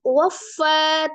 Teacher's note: Zi mad tabi'iyah, ya sukun sebelumnya kasroh di huruf zal, dibaca 2 harakat. Waffa, tasdid di huruf fa, fa-nya sifatnya ragha ya, mengalir, kemudian fa dibaca mad 2 harakat.